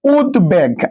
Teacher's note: সে দ এর সাথে কোন স্বরধ্বনি উচ্চারিত হয় নাই তাই এখানে কি হবে এখানে একটা হসন্ত হবে।